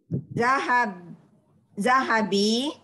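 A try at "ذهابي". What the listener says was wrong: Zahab itu kan panjang. Zahabi.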